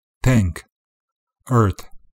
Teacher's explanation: in many Irish accents Dental plosive sounds are used instead of fricatives